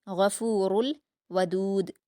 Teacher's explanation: غین اور را دونوں کو پر پڑھیں گے